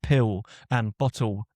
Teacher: members of my own family have examples of this change where an L is becoming like a W sound